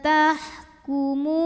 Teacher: Karena waw sukun didahului baris dhammah. Maka mimnya ini kita panjangkan cukup dua harokat. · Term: mad tabi'i zahiri